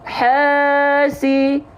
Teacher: Semuanya ini dibaca dengan kadar panjang 2 harokat. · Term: mad tabi'i